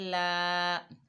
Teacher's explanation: लाम के ऊपर खड़ा ज़बर है तो एक अलिफ की मिकदार खींच कर पढ़ा जाएगा